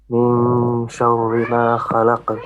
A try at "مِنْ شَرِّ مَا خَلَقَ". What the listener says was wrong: Make your ra flat. من شر. The ra has to be flat. شر. Make your kha a bit more heavy, okay? So kha, خلق. شر ما خلق. Your qaf with the qalqala also has to be heavy. So the lam is going to be flat. Fa, la, qa. خلق. So kha is heavy and qa is heavy, but lam is flat.